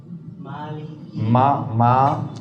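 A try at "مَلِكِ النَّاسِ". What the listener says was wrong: Ma jangan tebel. Ma, bukan mong.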